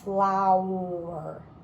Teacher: i don't really hear an ah or an o i hear an ow flower that is a new sound a diphthong we call that